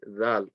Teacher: the letter dal, remember, is going to be from the tip of the tongue touching the tip of the top 2 teeth. You're not going to say zal.